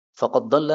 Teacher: Jadi dalnya hilang menjadi dad ya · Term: idgham